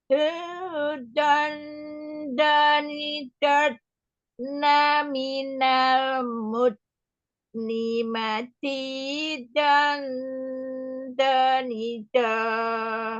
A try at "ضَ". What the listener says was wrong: Oke, Eyangnya masih pakai ujung lidah. Belum pakai sisi lidah. Makanya belum bisa.